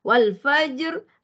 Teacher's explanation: tebal kerana baris fatahah pada huruf Fa tu ya Wal faajr bila wqaf di situ sebenarnya sifat ro automatik bertukar menjadi tebal ataupun istilahnya tafim